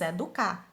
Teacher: quer dizer que ela é oxítona porque a sílaba tônica é a última